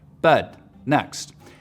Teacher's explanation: trap moving up higher pushes the dress vowel back in the mouth so words like bed next sound like bud next